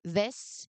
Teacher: you should feel a very clear, continuous vibration that lasts through the entire sound. So if your throat is quiet, you are accidentally making the sound instead.